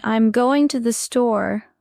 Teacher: in I'm going to the store, we stress go and store